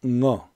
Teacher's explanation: 이 어는 그냥 어가 아니라 응어 이런 발음이었죠